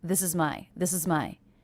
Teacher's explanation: So this string of 3 unstressed words, this is my, this is my, this is my, this is my. Very fast and very connected.